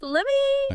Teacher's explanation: The T at the end of let usually just disappears and the me gets reduced.